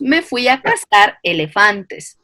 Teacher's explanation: El ceseo quiere decir pronunciar la consonante C, S y Z como S. Yo en vez de decir me fui a cazar elefantes, nosotros pronunciamos me fui a cazar elefantes, ¿sí?